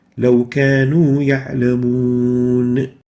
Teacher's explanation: When we stop on the noon here, we lengthen the mad vowel that is followed by the incidental sukoon. The sukoon has now become incidental, it's not original, and that incidence happened due to pausing on it upon recitation stopping.